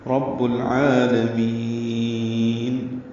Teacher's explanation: با کو العالمین کے لام سے ملائیں گے، اظہار قمری ہوگا، عین وسط حلق سے ادا کریں گے، لام باریک ہے، میم کو لمبا کریں گے، وقفاً مد عارض سکون ہے